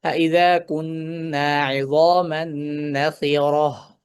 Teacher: অর্থাৎ গোলতায় আমরা সুকুন দিব। গোলতা যখন সুকুন হবে, তখন গোলতা গোল হায়ের মতো উচ্চারিত হবে।